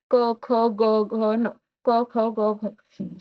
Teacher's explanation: हे पूर्ण कंठातून उत्पन्न होते कंठ आपण जेव्हा बोलतानी हे आपल्या कंठातून निघणारे स्वर आहेत व्यंजन